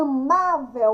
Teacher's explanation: o má é mais forte